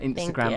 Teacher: the emphasis on the last syllable of Instagram